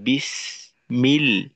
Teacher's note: সিন এবং মিম সমপরিমাণ সময় দেওয়া